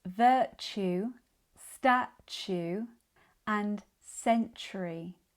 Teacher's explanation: All these words have the T followed by the U sound, which we pronounce as chew. In connected speech, this becomes even more noticeable.